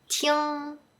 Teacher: the “ng” at the end is stronger and longer.